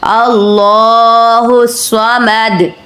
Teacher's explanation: آپ نے صاد کو رک کر ذرا سختی سے ادا کرنا ہے، شد والی ہے، مشدد حروف ہے، اللہ الصمد۔